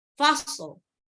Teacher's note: Ada shotnya mati, shotnya sukun, lamnya juga harus disukunkan. Karena shot ini bukan huruf qalqalah, maka dia tidak dipantul ya. Tapi seperti gini, diselesaikan dulu shotnya. · Shot itu dia mirip dengan huruf sin ya. Ujung lidah dengan dua gigi seri bawah.